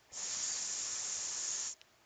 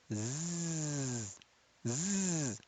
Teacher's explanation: seen, does not have the vocal cords working. Za has the vocal cords working. Za has voice. · the point of articulation of seen and za is exactly the same.